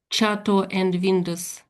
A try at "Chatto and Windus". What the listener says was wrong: It's still a bit like Vindus when you're saying it. To me, it's too much of a V sound when you're saying this bit here. But for me, this is like wind. we'll probably say Windus. It's probably Windus. Windus.